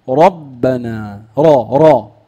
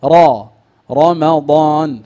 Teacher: اي راء مفتوحه فحكمها التفخيم